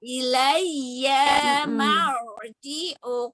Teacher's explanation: Ini ada ro sukun sebelumnya fathah. Jadi ro-nya harus tebal dong.